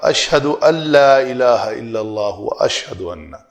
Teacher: تو اشہد ان لا الہ نون کی آمیزش بالکل زیرو ہونی چاہیے